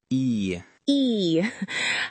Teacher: To make the e sound, your jaw is quite closed and your lips spread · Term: long e vowel sound